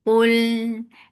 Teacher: قل قاف is heavy for Dhamma, circle lips attached with lam, lam will get above tawassut. قل, and as you will touch lam, your lips should be in a straight position and lam should be light.